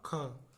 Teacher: जो ख है आपका ये महाप्राण है